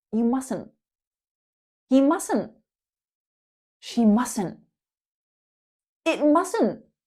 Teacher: Notice how that T in the middle is silent.